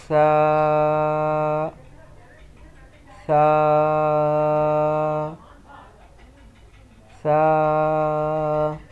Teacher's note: اس کا مخرج زبان کا سرا اور اوپر کے دانتوں کے اندرونی کنارے سے ادا ہوتا ہے۔ تب جا کے سا ادا ہوگا۔